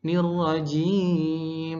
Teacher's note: Kalau di metode umi jimnya turun